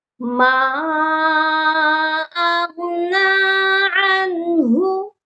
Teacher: ہا کی آواز سینے سے آئے گی